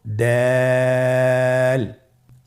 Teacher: দাল হরফটি বারিক হরফ। এ হরফটি উচ্চারণ করার সময় আমরা অবশ্যই তিন আলিফ টেনে পড়ব।